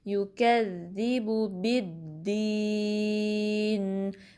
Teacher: با کو دال سے ملائیں گے، دال پہ پریشر ڈالیں گے